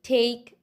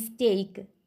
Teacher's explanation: intake it is aspirated and in stake it is unexpirated